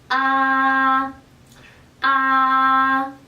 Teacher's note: En el caso de la vocal A, su sonido es prácticamente idéntico al de esta vocal en español. Es decir, la boca tiende a abrirse a su máxima amplitud en forma circular